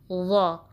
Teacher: ज़ुबान की नोक ऊपर के दांतों के किनारे के साथ लगाएंगे और ज़ुबान का जो बैक पोर्शन है उसको उठाएंगे ताकि वा थोड़ा हैवी पड़ा जाए। वा में ज़ा जैसे सख्ती ना आए, शार्पनेस ना आए।